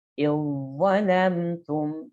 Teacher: Zal sukun bertemu dengan dha. Idzalamtum. Jadi dibaca huruf dha-nya saja.